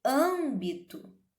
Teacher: Em âmbito, eu vejo que eu tenho um som nasal do A, certo? Então, o som que eu pronuncio é o som da vogal A nasalizada